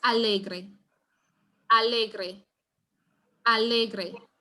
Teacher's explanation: the stress is going to be on the le, which is the second to last